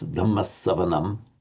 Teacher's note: we would very distinctly pronounce the double S, Dhammasavanam.